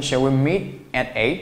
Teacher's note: meet▁at▁和▁eight▁or▁之间基本上不要产生连读